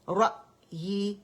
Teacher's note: رأی، را فتح، حمزہ سکون، را، را، حمزہ باریک ہے، را موٹا ہے، حمزہ کو موٹا نہیں کریں گے